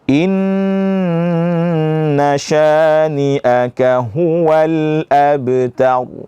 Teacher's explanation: Inna yang pertama wajibul gunnah, dibaca lama.